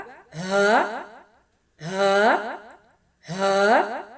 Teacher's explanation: ہا، جوف دہن یعنی حلق کے نیچے والے حصے سے ادا ہوگا۔